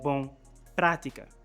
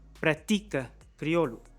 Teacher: with the accent on the third to last syllable